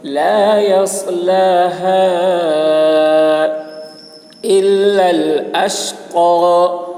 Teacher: تَلَظَّى لَا يَصْلَاهَا إِلَّا الْأَشْقَى، صاد کی آواز سخت ہوگی، يَصْلَاهَا، ہا کی آواز باریک ہوگی اور کھینچیں گا، مد ہے